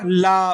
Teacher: निश्वास के समय जिभ्या के बगल से निकलने वाली व्यंजन ध्वनि जो जिव्या के बगल से निकलती है तो वो कौन सी हो गई? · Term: पार्श्विक व्यंजन